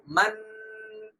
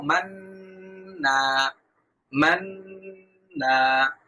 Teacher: মান গুন্না করতে করতে গুন্নার শেষ অংশে আমরা আমাদের ঠোটটা কিছুটা গোল করে ফেলব